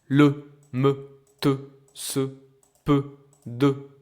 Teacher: these are open sounds because nothing is after the sound of the vowel.